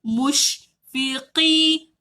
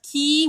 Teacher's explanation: Qaf dari bawah. Tebalkan. Tak nak ki.